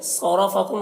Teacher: صاد کو پر پڑھیں گے را کو پر پڑھیں گے. میم میں اظہار شفوی ہوگا.